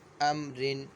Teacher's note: یہاں پہ را کو جو ہے باریک پڑھیں گے کیونکہ را کے نیچے دو زیر ہیں